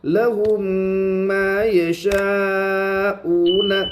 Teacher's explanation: معروف پڑے مجھول آواز سے بچے، میم کے اوپر جزم ہے، میم ساکن کے بعد میم ہے، اس لیے میم کو میم سے ملا کر گنہ کے ساتھ پڑھیں گے ، اس کو ادغام شفوی کہتے ہیں۔ میم کے اوپر تشدید